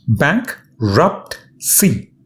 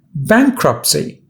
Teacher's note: 3 syllables, bankruptcy. And the first syllable bank is stressed.